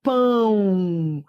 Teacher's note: Esse O tem som de U.